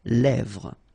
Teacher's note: Same thing here, final S not pronounced, and then this E accent grave here, it gives you the E, really open sound